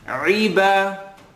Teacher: I want you to allow the ayn to have an e sound.